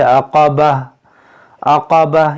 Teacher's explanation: گول تا پر جب وقف کریں تو اسے ہا ساکنہ بنائیں